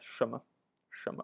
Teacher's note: 什么 is a question word with second tone followed by fifth tone, and often you just pronounce it as 什么 very fast.